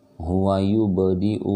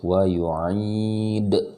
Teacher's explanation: Kalau ba dia ada di tengah kalimat, dia namanya qalqalah sugro, shagir atau kecil, jadi suaranya tidak terlalu tidak terlalu jelas, tidak terlalu besar, qalqalahnya cukup sedikit saja